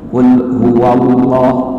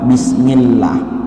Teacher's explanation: lafaz Allah bila mana diawali dengan fathah atau juga dhammah, maka lafal Allah ini dibaca tafkhim